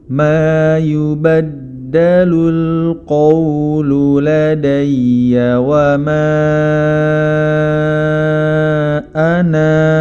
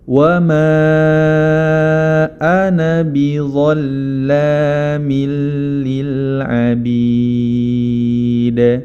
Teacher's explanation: Ana tidak dibaca panjang ketika wasal. Namun apabila kita waqaf pada kata ana, maka dia dibaca panjang sepanjang 2 harokat.